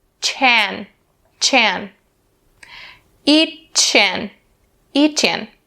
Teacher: we'll bring that ch sound over to an.